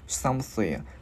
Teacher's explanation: Chữ S đưa lưỡi qua giữa hai răng thổi hơi.